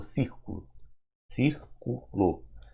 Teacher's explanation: Na proparoxítona, a sílaba tônica será cir, tá? Ou seja, é a antepenúltima.